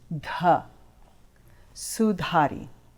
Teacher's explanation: it's an aspirated D where you place your tongue behind the front two teeth and put out a little aspiration